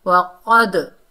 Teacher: दाल में double sound आएगी क्योंकि ये कुतुबु जद्दीन के हरूफों में से आ रहा है